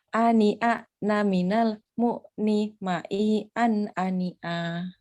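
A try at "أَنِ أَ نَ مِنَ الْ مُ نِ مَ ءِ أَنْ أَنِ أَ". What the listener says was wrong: Nah, supaya nggak nyeret, diputus seperti itu. Nah, makanya diputus saja kalau masih ada jeda nyeret itu nanti terbiasa terbawa pas ngaji. Ani a na udah berhenti aja. Ani a na minal mu ni ma i an ani an. Kalau ani a na minal na mi itu sudah kepanjangan.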